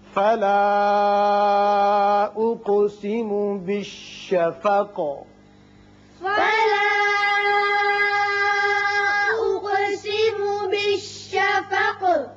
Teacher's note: یہ مد منفصل ہے، 3 الف کھینچیں گے